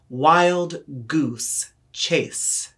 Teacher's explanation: elongating the consonant s sound at the end of goose and chase